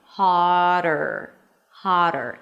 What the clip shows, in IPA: hɑːɾər